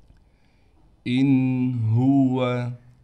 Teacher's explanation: نون پر غنہ بالکل نہیں کیا جائے گا